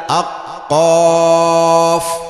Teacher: কফ বলতে যেমন, 21 নম্বর মাখরাজ, জিহ্বার গোড়া তার বরাবর উপরে তালুর সাথে লাগাইয়া আক কফ উচ্চারিত হয়। কফ পড়তে লম্বা টান ভুলব না, অল্প টান হবে না।